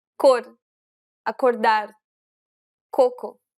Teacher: this is an unaspirated sound, meaning there shouldn't be a burst of air when you pronounce this consonant.